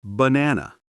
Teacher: only the middle one is strong the others are relaxed that's English rhythm strong weak weak